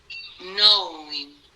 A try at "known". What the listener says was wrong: Known. Aquí no hay I, solo O. O. No. Y after no, you say the N sound. Después se dice la N. Known. Ok, known. Es que estás diciendo knowing. Como camión.